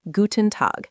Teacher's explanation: In Guten Tag, the main stress is on Tag. Say it like one smooth unit, Guten Tag.